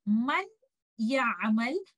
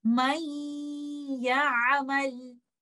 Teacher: You will merge letter Nun with letter Ya and you will hold the gunna for some time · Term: idgham